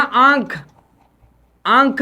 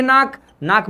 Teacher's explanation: आंख बोलते हैं तो नाक पर भी जोर पड़ता है